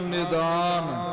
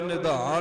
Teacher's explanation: ਨਿਦਾਨ ਇਹ ਪੋਲਾ ਬੋਲਿਆ ਜਾਊ, ਇਹ ਨਿਧਾਨ ਨਹੀਂ ਆਖਣਾ। ਨਿਧਾਨ ਦਾ ਅਰਥ ਖਜ਼ਾਨਾ ਹੁੰਦਾ ਹੈ, ਜੇ ਧੱਦੀ ਨਾਲ ਹੋਵੇ, ਤੇ ਨਿਦਾਨ ਦਾ ਅਰਥ ਅੰਤ ਹੁੰਦਾ ਹੈ।